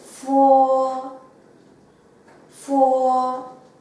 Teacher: 下の唇と上の歯を軽く接触します